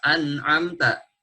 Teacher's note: dibaca jelas an'amta, nun bertemu dengan ain. Tidak dibaca samar an'amta, tidak seperti itu. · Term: izhar